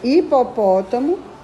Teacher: a sílaba tônica, no caso do hipopótamo, é o pó com acento